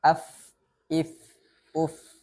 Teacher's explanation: ujung gigi seri atas menyentuh badan bibir bagian bawah fa fa sifatul huruf Fa yang pertama yakni adalah hams adanya aliran nafas